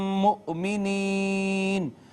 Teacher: حمزہ کو جھٹکے سے پڑھا